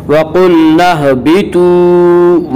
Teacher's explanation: وَقُلْنَا اهْبِطُوا، واو مدہ وہ واو جو ساکن اس سے پہلے پیش ہو، واو مدہ کو ایک الف کے برابر کھینچ کر پڑھیں گے